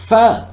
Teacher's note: air is forced through the upper teeth and lower lip. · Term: Labiodental